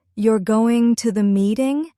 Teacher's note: If your voice rises, it becomes a question. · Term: intonation